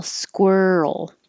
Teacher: Keep making noise as you move from the R to the L. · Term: roll noise